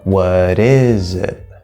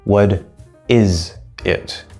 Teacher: the Z no longer sounds like it's part of that stressed syllable, it sounds like it's part of the unstressed it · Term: a connection or a link